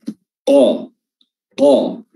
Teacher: Huruf qaf, ya, huruf qaf, lidah bertemu dengan langit-langit bagian dalam atau langit-langit lunak. Qa, ya, pangkal lidah, ya, paling belakang lidah bertemu dengan paling belakang mulut